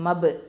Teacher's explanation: இந்த ப சுக்குன் வந்து கல்கலத்து சுக்ரா.